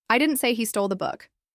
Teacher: You can stress different words in that sentence, and each time the meaning changes. If I stress I, it sounds like I'm correcting someone.